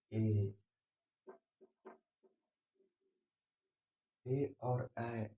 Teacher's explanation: ए और ऐ को हम लोग बोलते हैं कंठ और तालु से। कंठ और तालु से बोलते हैं, उसको बोलते हैं कंठ तालु, कंठ तालुब्बे, कंठ तालब्बे।